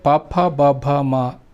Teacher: ಪಭ ಮ ಇದನ್ನ ತುಟಿಗಳ ಸ್ಪರ್ಶದಿಂದ ಮಾತ್ರ ನಾವು ಉಚ್ಚರಿಸುತೀವಿ